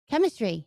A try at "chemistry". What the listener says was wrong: You said it with an N.